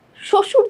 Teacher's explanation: বফলা যখন শব্দের শুরুতে থাকে তার কোন উচ্চারণ থাকে না